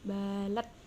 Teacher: Qalqalah kubro lagi karena hukum qalqalah qalqalah dal diwaqaf, cara membacanya dipantulkan lebih tebal.